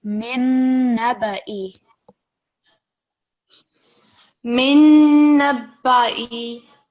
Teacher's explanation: because we've got noon mushaddad, we're going to have a strong nasal sound